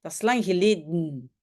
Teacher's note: Et le geleden, c'est un peu bizarre. Donc, le E de geleden a disparu. Et on appelle ça dans la phonétique un coup de glotte.